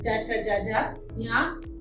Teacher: चा छा जा झा या, और या और शा हमारा तालु से उच्चारित होता है। फिर उसके बाद है ऋतु रसाणाम मूर्धा, ऋतु रसाणाम मूर्धा हमारा री, दोनों री, छोटी री, दीर्घ री, लघु री या दीर्घ री बोलेंगे हम इसको।